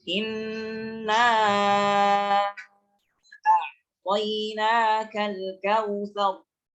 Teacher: Jadi inna dibaca 4 harakat atau 5 harakat. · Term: mad jaiz munfasil